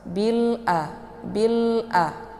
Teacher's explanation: A dibaca panjang 2 harokat karena ini ada baris tegak ya. Ini merupakan adalah mad tabi'i.